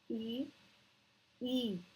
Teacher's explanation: इससे बोलते वक्त जीभ जो है आगे की तरफ रहती है इसलिए ये अग्र स्वर होते हैं